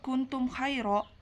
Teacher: ikhfa karena huruf nun sukun bertemu huruf ta cara membacanya samar dengan dengung dan ditahan selama 3 harokat kemudian izhar syafawi karena huruf mim sukun bertemu dengan huruf k · izhar syafawi karena huruf mim sukun bertemu dengan huruf k cara membacanya dengan jelas · madlin karena huruf Ya Sukun didahului oleh huruf H berharakat fathah dibaca panjang 2 harokat